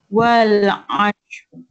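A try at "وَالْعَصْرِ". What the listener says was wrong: Bukan ash tadi. Ain sad as. Wal as. Dia jangan dia di huruf shin tak nak. Wal as. Ain sad as.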